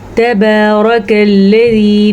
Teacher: را کو پر پڑھنا ہے کیونکہ را کے اوپر زبر ہے۔ جب کبھی را کے اوپر زبر ہو یا پیش ہو تو را کو پر پڑھیں گے۔